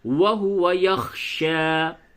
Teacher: خا حروف حلقی ہے، یعنی کہ اسے حلق سے نکالتے ہیں